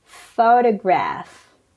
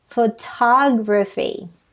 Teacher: the stress is on the first syllable photograph but in photography the stress is on the second syllable